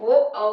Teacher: ओ औ का उच्चारण स्थान कंठोष्ठ से होता है, इसलिए इन्हें कंठोष्ठ वर्ण कहते हैं। ओ औ को कंठ ओष्ठ वर्ण कहा जाता है।